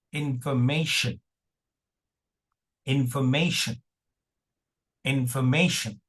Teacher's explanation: A ti is pronounced as sh. T is pronounced as SH and not T